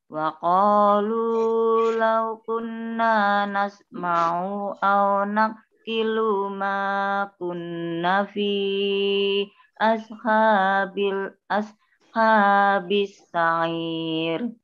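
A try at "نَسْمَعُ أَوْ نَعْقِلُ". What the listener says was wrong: Ulangi, nasma'u u-nya pendek, naqilu lu-nya pendek.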